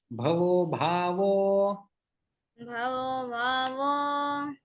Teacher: जो दोनों विसर्ग है वो ओ में परिवर्तित हो जाते हैं